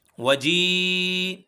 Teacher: وجیء یہاں ہم 4 سے 5 الف کے برابر کھینچیں گے